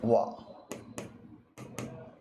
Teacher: वह ध्वनि जिसका उच्चारण दंत एवं ओष्ठ या जिसके उच्चारण में जीभ का अग्र भाग दांतों को स्पर्श कर दे और ओठों की सहायता ली दोनों के साथ कर दें। दंत और ओष्ठ दोनों की सहायता से होता हो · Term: दंतोष्ठ